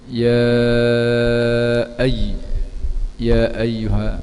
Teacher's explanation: ya dibaca dengan 4 atau 5 harakat, mak wajib muttasil